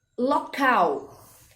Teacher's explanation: Então, local, nós temos lá o cal, é a última sílaba, é a sílaba de maior intensidade, logo é uma oxítona